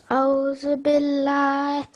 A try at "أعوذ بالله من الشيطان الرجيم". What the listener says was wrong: That's one thing that many students do wrong. They say A'udhu Billah. It's not A'udhu Billah. There's an ayn as well. A'udhu Billah.